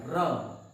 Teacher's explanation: लुंठित का मतलब कि सांप जैसे लुटता है उस प्रकार से हमारी जिह्वा, हमारी जीभ में ऐठन होता है इसका उच्चारण करते समय। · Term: लुंठित वर्ण